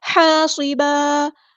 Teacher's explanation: ہا کو مستحرک میڈل throat سے ادا کرنا ہے